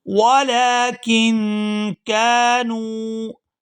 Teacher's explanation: یہاں کاف کو نون ساکن کے ساتھ ملائیں گے تو اخفا کریں گے۔ وَلَكِن كَانُوا، كَانُوا، یہاں کاف کو بھی لمبا کیا جائے گا کیونکہ اس کے ساتھ الف مدہ ہے، اور آگے نون کو واو ساکن کے ساتھ ملائیں گے تو کھینچ کر ادا کریں گے کیونکہ یہ واو مدہ ہے۔